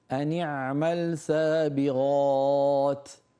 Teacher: بس أنيعمل العين عليها شوي، أنيع يعني عمقيها إلى وسط الحلق، أليست العين من وسط الحلق؟